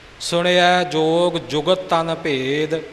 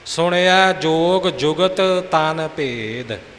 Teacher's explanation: ਦੋਹਾਂ ਤੱਤਿਆਂ ਨੂੰ ਨਿਖੇੜ ਕੇ ਬੋਲਣਾ ਹੈ